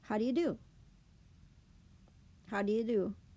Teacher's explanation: the first do and the you almost runs together.